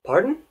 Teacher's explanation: there's got to be a little bit of a rising intonation